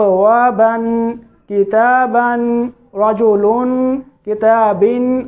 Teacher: तो तनवीन के आखिर में नून साकिन की आवाज़ निकलती है